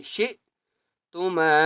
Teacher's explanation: شین کے آگے حمزہ ہے، اس لیے جھٹکا دے کر پڑھیں گے ، شئتما، میم کو بھی ایک الف کی مقدار کھینچ کر